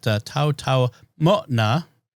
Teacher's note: The apostrophe is a glottal stop there